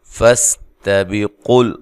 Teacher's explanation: تا کو باریک پڑھنا ہے، سین کو باریک سیٹی سے ادا کرنا ہے